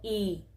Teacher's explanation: punto donde se ancla la lengua en la parte delantera donde la parte superior de la lengua se mueve hacia el paladar duro